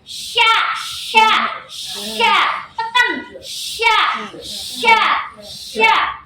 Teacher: Kalau syin tengah lidah bertemu dengan langit-langit atas.